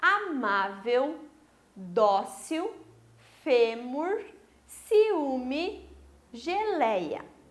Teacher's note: Essas são as palavras que apresentam a penúltima sílaba tônica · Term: paroxítonas